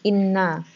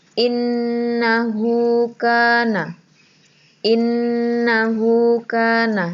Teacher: sukun yang kedua Nun fathah jadi Inna tapi karena di sini Nun bertasydid itu adalah bacaan ghunnah jadi cara membacanya harus dengung